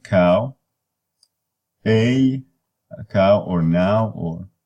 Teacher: they are a blend of two distinct vowels and you start with one and switch midstream into the other so you blend the two valves so the first one is